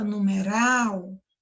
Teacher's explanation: Quando você fala numeral, percebe que aqui a última sílaba você fala com mais força. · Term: oxítona, sílaba tônica